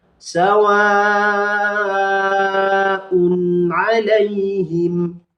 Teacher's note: Ini disebut dengan bacaan izhar. Jangan sampai didengungkan cara bacanya.